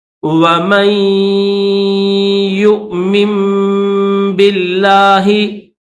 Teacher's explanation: یہ جو میم ہے اس کو یا کے ساتھ ملائیں گے، یہاں پر غنہ کریں گے، غنہ کر کے میم کو یا کے ساتھ ملائیں گے